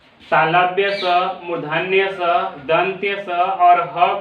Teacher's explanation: क्योंकि ऊष्म क्यों कहते हैं? क्योंकि इनका उच्चारण रगड़ या घर्षण से उत्पन्न उष्ण वायु से होता है। उष्ण का मतलब होता है गर्म, ये गर्म वायु से होता है। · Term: ऊष्म व्यंजन